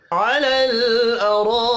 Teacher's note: रा ज़बर की वजह से पुर पढ़ा जाएगा। अलिफ के ऊपर बड़ी मद है, 5 अलिफ के बराबर खींच कर पढ़ेंगे · अलल लाम साकिन पर कलकला नहीं करना। रा ज़बर की वजह से पुर पढ़ा जाएगा।